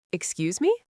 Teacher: the tone must go up at the end. If you say excuse me with a falling tone, it sounds like you're angry at someone for bumping into you.